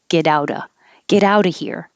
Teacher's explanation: So the T changes to a D in get. It changes to a D in out.